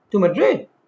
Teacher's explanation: This involves repeating a key word with a slightly rising intonation to show genuine interest and prompt elaboration. For instance, if someone says, "We moved to Madrid last month." You can repeat to Madrid.